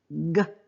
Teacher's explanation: Same with a sound like g. I'm stopping the flow of air at the throat.